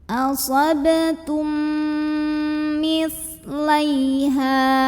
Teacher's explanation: Lalu berikutnya di sini ada idgham mimi karena ada mim sukun yang ketemu dengan huruf mim. Maka mim pertama lebur ke mim kedua disertai dengungan. Bunyi M-nya tahan.